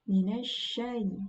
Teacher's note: huruf sya ini bukan termasuk huruf yang melibatkan bibir, atau bukan huruf bibir, melainkan huruf yang makhrajnya berada di lisan. Minasya, jadi tidak perlu minasya, bibirnya tidak perlu maju, tidak perlu juga membulat.